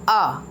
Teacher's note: जो जीभ है वो ना ज़्यादा ऊपर जाती है, जो ना ही नीचे आती है, वो मध्य में रहती है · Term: मध्य स्वर